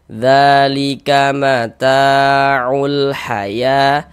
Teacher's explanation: Senyya ta dibaca panjang begitu. Mad thobi'i panjangnya dua harakat.